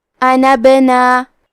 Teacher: کلمت انبنا میں با پہ جزم ہے تو یہاں با کا حکم ہے قلقلہ، تو ہمیں حرف البا کو ہلاتے ہوئے یہ کلمہ کو پڑھنا ہے